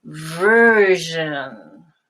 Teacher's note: Version and virgin. Now, the j sound in version is a completely continuing sound. Version. It never has a stop in it here in this word.